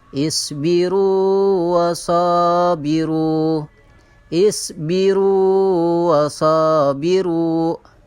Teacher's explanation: Ada pengecualian, yaitu pada huruf waw dan huruf ya. Maka cara membacanya tidak diidghamkan, tetapi dibaca panjang satu alif atau dua harokat. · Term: mad tabi'i